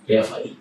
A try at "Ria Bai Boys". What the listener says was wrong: Ria Fai. Not with the Ria Fai, it's Ria Bai Boys. Yeah, Ria Bai Boys. You must be in a position uneza uneza your difference ya Ria Fai na Ria Bai.